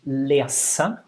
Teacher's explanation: I don't know what your mother tongue is, but maybe you have the issue that in your mother tongue you use a z always and not a s. So in Norwegian we only have the s without voice. So if you put the finger here, no vibration. · Lese with a non-voiced S